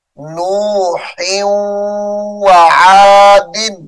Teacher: نوح آ کو واو کے ساتھ ملائیں گے